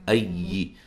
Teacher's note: حمزہ کو یا سے زور سے ملائیں گے، یا کو لمبا نہیں کریں گے